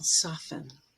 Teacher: You may be familiar that in the word often, T is silent in standard English. And also if you take soft and make it a verb with en, the T will drop there as well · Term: silent t